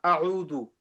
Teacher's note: The hamza is strong and the ayn is softer.